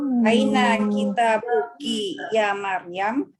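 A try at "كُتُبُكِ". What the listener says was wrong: Yakin itu kitab? Kalau kitab itu taknya panjang, Om. Kalau pendek dibacanya apa, Om? Bentuk jamaknya ini, Om. Kutub.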